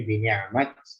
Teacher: bini'amat ini ain, ya, harus dijelaskan jangan seperti hamzah